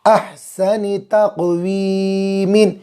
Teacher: بڑا ہا نکالیں گے وسط حلق، حلق کے بیچ والے حصے سے